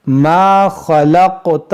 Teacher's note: یہ قاف میں قلقلہ کریں گے